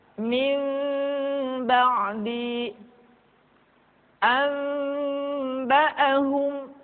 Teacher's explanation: suaranya tidak boleh tergesa-gesa kemudian diucapkan mim dengan cara yang samar caranya ketika mengucapkan huruf mim kedua bibir kita agak sedikit direnggangkan tidak sempurna rapat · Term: iqlab